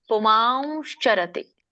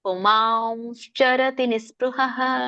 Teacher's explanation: ಮಾವ್ ಬರ್ಬೇಕು ಅಲ್ಲಿ, ವ ಅನುಸ್ವಾರ ಉಚ್ಚಾರಣೆ ಆಗ್ಬೇಕು, ಮೂಗಿಂದ ವ ಬರ್ಬೇಕು.